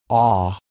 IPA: ɑ